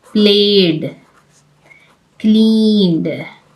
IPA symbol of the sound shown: d